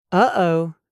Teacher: We cut the sound off. It sounds like a catch in the throat. Uh-oh, that sound in the middle of uh-oh is a glottal stop. · A glottal stop happens when we close the vocal cords in the throat to stop the air, instead of using the tongue. We cut the sound off.